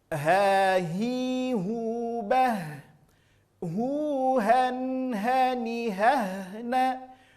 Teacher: Keluar dari aqsal halqi, keluar dari pangkal tenggorokan.